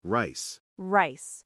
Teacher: My tongue definitely doesn't touch the roof of my mouth.